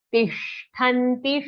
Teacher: Tishtanti, shatkon ka sha, the murdhanya sound, our tongue will curl up, it will roll back